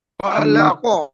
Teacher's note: কফের উপরে সাকিন করলে কফের আওয়াজটা ফিরে আসবে। ধাক্কা খেয়ে যেমন বল যেমন দেওয়ালে মারলে যেমন ফিরে আসে, ঠিক ততরূপ কফের উপর যখন সাকিন করা হবে তখন কফের আওয়াজটা ফিরে আসবে।